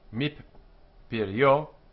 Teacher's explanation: So it's min and peri and o. Mip pirio, doubled because the nun disappears